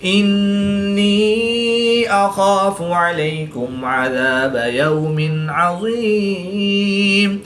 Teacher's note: یا مدہ کے بعد حمزہ دوسرے کلمے میں ہے تو یہاں پر مد منفصل ہوگی، 2 سے 3 الف تک کھینچ کر پڑھیں گے۔